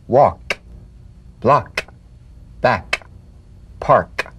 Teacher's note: tongue back pive consonant with the tongue in the G position let the tongue spring away in the soft unvoiced click of the K